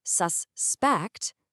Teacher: If you just shift that stress to the second syllable, suspect, poof, it becomes a verb. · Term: word stress